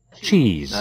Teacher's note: Cheese bật rất mạnh, từ trò cheese bật rất mạnh nha. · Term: trờ nặng